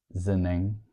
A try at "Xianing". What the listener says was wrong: No, not with a Z. Xia? Xia? No. With a T. Xianing.